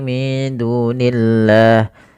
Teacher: pada lafal Allah ketika dia di kasrah tidak boleh dibaca tebal lamnya